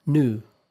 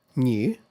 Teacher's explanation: British English, the pronunciation usually includes y sound. In American English, however, that sound is not really there.